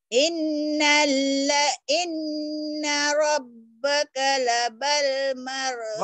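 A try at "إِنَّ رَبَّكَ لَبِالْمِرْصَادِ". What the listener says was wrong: Labal labil. Ini barisnya di bawah. Inna rabbaka. Kanya pendek. Inna rabbaka labil. Inna rabbaka labil. Inna rabbaka labil mirsad.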